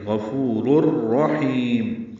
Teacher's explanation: غفور الرحیم، را پر ہے، حا وسط حلق سے ادا ہوگا، یہ بھی لمبا کریں گے اور میم ساکن پہ اظہار ہوگا. · را کو را سے ملا دیں گے، ادغام کامل ہوگا. رور پڑھیں گے.